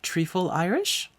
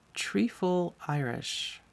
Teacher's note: The Irish pronunciation of the TH sound, at least in this part of the country, seemed to be how I would pronounce a solitary T